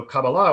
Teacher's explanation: the stress is put on the last syllable